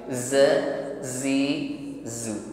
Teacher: Didesiskan sifat yang dimiliki oleh huruf zai ini shafir.